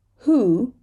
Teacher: here we have a wh but we're saying the H and we're dropping the W